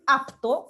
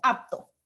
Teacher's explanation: yo la puedo pronunciar como apto, ¿no? Efectivamente con la P, o yo puedo pronunciarla como apto, con la B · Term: neutralización